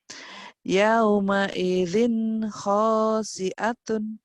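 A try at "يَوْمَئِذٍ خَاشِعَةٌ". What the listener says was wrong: Shin-nya besar. Shin. Yauma idzin khasyi'atun. Hutang shin ya, enggak apa-apa dulu.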